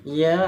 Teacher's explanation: padahal sinnya itu jauh lebih panjang daripada huruf ya-nya ya